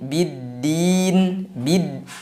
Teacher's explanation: Jadi dalam ta'rifnya lam sukun tidak terbaca. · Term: idgham syamsiyah